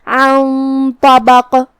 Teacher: آخر میں نون ساکن ہے، پھر حرف الطا آتا ہے کلمت طبق میں، طا حروف الاخفاء میں سے ہے، اخفاء کا معنی ہے چھپا دینا، تو ہم یہاں نون ساکن چھپائیں گے اور غنہ کے ساتھ یہ حکم کو ادا کریں گے۔